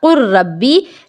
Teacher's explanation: حرکتوں کو ہٹا دیا گیا۔ تو یہ ہو گیا قر ربی، لام کا پوری طرح سے را میں ادغام ہو گیا، لام کو را سے بدل دیا گیا